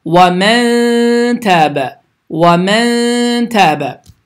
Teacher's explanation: Sukunlundan sonra T hərfi gəlir. Deməli, n səsi burunda gizlənərək 2 saniyə uzadılaraq ixfə qaydası kimi bu formada oxunmalıdır